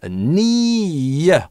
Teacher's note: Здесь у нас linking [j]. Потому что долгий /iː/ с гласным только так можно связать.